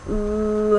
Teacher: if your tongue is farther back but still high you would get a vowel like ooh ooh you can feel how the back of your tongue is